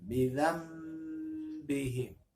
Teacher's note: Tertulis bidzan, tapi karena habis nun mati atau nun sukun pada kata bidzambihim, karena habis nun mati atau nun sukun ada huruf ba, maka nunnya berubah menjadi mim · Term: iqlab